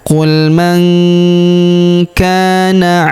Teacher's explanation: huruf ka kita panjangkan dua harakat karena terdapat alif di depannya.